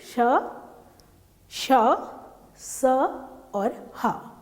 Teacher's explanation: जब उच्चारण करते हैं तो जो श्वास वायु है वो रगड़ करके बाहर निकलती है, इसलिए इनको ऊष्म व्यंजन कहा है।